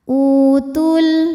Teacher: Kalau wasal jadi pendek, gugur madnya. Namanya takhallus bil hadfi. Kenapa? Karena ada pertemuan 2 huruf sukun, di mana sukun pertama adalah waw sukun, sukun kedua adalah lam sukun. · Sukun bertemu sukun tidak bisa dibaca sehingga sukun pertama dilepaskan.